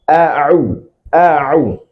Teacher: Ain itu keluar dari tengah tenggorokan.